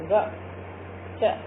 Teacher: जिन व्यंजनों का उच्चारण करते समय श्वास यानी वायु की मात्रा कम तथा कमजोर होकर निकलती है, उन्हें हम अल्प प्राण कहते हैं।